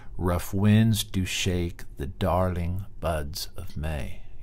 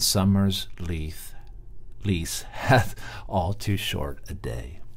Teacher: so you got unstressed followed by stressed syllables and there are five stresses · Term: iambic pentameter